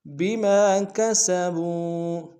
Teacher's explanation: بما میں میم کے ساتھ الف مدہ ایک اسم دار میں کھینچیں گے، کسب میں با کو واو کے سامنے آئیں گے، واو مدہ ایک اسم دار میں کھینچیں گے۔